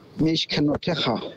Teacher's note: We have two shvas inside the word. The first one closes for us, and the second one is vocalized. And that's the only time when you'd have a vocalized schwa other than at the beginning, when you have two schwas in the middle, one after the other.